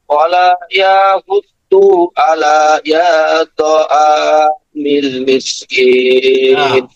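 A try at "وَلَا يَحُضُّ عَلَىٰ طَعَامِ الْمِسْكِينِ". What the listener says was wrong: আলার পরে কিন্তু ইয়া নাই, এটা হচ্ছে মাদের হরফের এটা আসছে, বুঝছেন? এটা হবে ওয়ালা ইয়াহুদ্দু আলা তা'আমিল মিসকিন। হ্যাঁ, আপনি তো বলছেন আলা ইয়া, না কিন্তু আলাই হবে, শুধু আলা ইয়া হবে না, আলা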